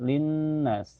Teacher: ada guna musyadadah karena ada nun bertasdid. Cara bacanya ditahan sekitar dua ketukan saja.